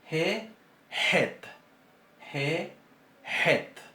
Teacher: Esta letra, este sonido se va a pronunciar un poco más atrás que la G y es más fuerte.